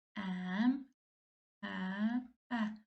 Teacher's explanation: Əmtəə sözündə ənin birisi düşür, digəri uzun tələffüz olunur